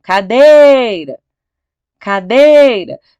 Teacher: Você sabe que é o dei. Então, é a penúltima sílaba mais forte.